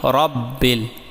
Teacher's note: یہاں پر را پر زبر ہے اس لیے اسے پر یعنی موٹا پڑھیں